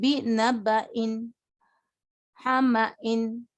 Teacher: جھٹکے سے پڑھیں گے کیونکہ حمزہ ہے